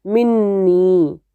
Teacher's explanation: اب نون ساکن ہے اور اگلا نون متحرک ہے، تو یہاں پہ اب نون کا ادغام بھی تو ہوگا